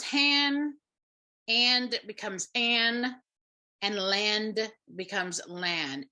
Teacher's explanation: we have the consonant cluster reduction or deletion primarily at the word final at the ends of words